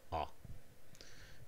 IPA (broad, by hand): æ